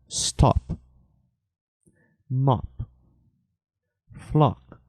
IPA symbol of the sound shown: ɒ